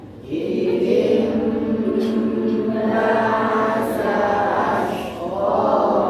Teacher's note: contoh mim kecil yang harus ditahan lama